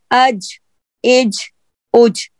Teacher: तो जीम का जो मखरज है, दोबारा बता रही हूँ, गौर कीजिएगा, बहुत आसान लफ्जों में मैं आपको बता रही हूँ कि जीम की अदायगी के वक्त यानी जीम को अदा करते वक्त, बोलते वक्त, पढ़ते वक्त होगा क्या, आपकी जुबान का जो वसतुल लिसान है ना, जुबान दरमियानी हिस्सा ऊपर की तरफ तालू के साथ चिपक कर हट जाएगी